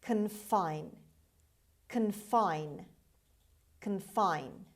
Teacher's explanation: The stress is on the second syllable on F. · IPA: /kənˈfaɪn/